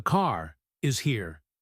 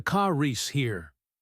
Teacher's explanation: The R links them. In American English, the R is usually pronounced anyway, so the linking is natural. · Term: linking R